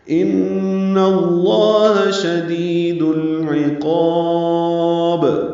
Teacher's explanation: ان میں نون مشدد پہ غنہ ہے اور اس کی زبر کی وجہ سے لام اس میں جلالہ یہاں بھی پر پڑا جائے گا.